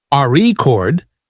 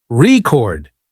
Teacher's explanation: For example, in the word record, if you stress the first syllable, RE chord, it's a noun, but if you stress the second syllable, record, it's a verb